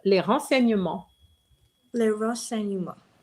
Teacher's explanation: be careful when you have a a consonant and a vowel, you cannot have the z sound. It has to be a s sound.